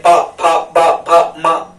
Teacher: फिर ये जो पा वर्ग के हैं 5 अक्षर, ये इनमें जब हम बोलते हैं पा फा बा भा मा, तो ये ओंठ दोनों मिल जाते हैं। ठीक है, ओंठ स्पर्श करते हैं एक दूसरे से और हवा को बाहर जाने से रोकते हैं, इसलिए ओष्ठ कहलाते हैं।